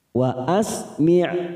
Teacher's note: saat kita wakafkan maka sifat dari Ain ini harus terasa yaitu sifatnya tawasud dan jahr